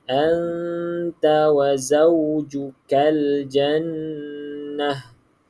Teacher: Anta, cukupkan dengung dia. 2 harakat.